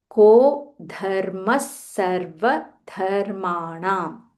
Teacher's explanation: visarga followed by sa dharmas sarva dharmanam. Stress on that sa little more.